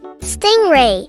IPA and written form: ˈstɪŋˌreɪ (Stingray)